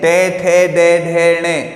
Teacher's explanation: हमारी जीवा जो है वो हमारे दांतों के पीछे की तरफ, ऊपर वाले दांतों के पीछे की तरफ खुरदरे हिस्से को स्पर्श करती है · ऊपर वाले दांतों के पीछे की तरफ खुरदरे हिस्से को स्पर्श करती है और इसकी जो ध्वनि है वो मूर्धन्य से निकलती है, इसीलिए इसका नाम क्या दिया गया है?